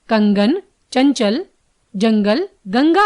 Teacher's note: अनुस्वार, इसके उच्चारण में वायु नाक से निकलती है